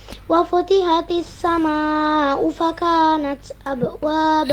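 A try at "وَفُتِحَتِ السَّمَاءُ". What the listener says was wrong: Ya, hati-hati di huruf ha-nya. Wa futiha, harusnya tidak wa futihatis tapi wa futiha. Ha bukan ha ya.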